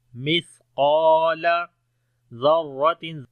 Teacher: اور لمبا بھی کریں گے، الف مدہ ہے، مثقال، مثقال ذرۃ، زال کو نرم پڑھیں گے، را کو موٹا پڑھیں گے